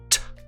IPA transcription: t